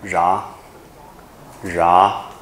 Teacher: 它是30个字母里面唯一的卷舌音 ，所以其他29个你念卷舌都错，这样了解吗？只有这个才是卷舌音，唯一的卷舌音，或者有时候叫反舌了哈。字母里面唯一的卷舌音就只有这个，其他如果你念卷舌就错了，这样来讲，我们念一下▁ra，▁ra，▁好，▁ra▁是山羊的意思，山羊也还好，意思这个不是很常用，知道一下意思就可以。然后第二个一样